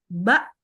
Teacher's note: Ba tegas nah ini berarti menunjukkan kalau dia bersifat syidah ya tekanan suaranya kuat bergantung makraj syiddah dia sehingga dia ba langsung berhenti ba Jadi